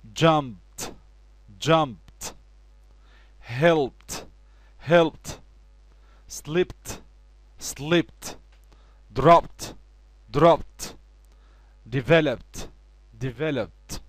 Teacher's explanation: أي فعل منتهي ب p sound بعد منه ed تقوم ال ed نحولها إلى t sound